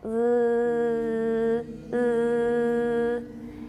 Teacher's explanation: Let's do an unrounded vowel. That's the E with a bar through it. So between E and U, go to the middle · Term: barred I